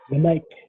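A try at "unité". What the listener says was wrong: Remember I've said, it is not silent when it has what? The acute accent. When is it not silent? It is not silent when it has acute accent.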